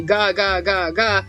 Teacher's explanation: when you say gagga your vocal cords vibrate and the use of this vocal cords is voicing and hence voiced consonants.